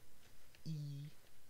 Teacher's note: This one, E, is high, front, and unrounded. E with lips spread. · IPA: [i]